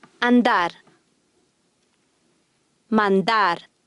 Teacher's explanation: after an N or L the Spanish D is hard